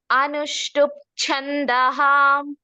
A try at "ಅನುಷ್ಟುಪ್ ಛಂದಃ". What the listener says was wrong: ಅನುಷ್ಟುಪ್ ಅರ್ಧ ಪ ಅಷ್ಟೇ.